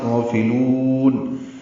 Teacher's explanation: فا کو جلدی سے پڑھیں گے، غین کو دو حرکات لمبا کریں گے، لام کو لمبا کریں گے وقفاً